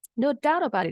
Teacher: T di kata about juga disambung ke bunyi huruf vokal I di kata it. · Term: linking sound